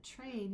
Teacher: you hear a slight ch come in because you're passing from your t sound through the ch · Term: africation